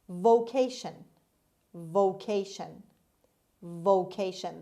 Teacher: the stress is on the second syllable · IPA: /voʊˈkeɪʃən/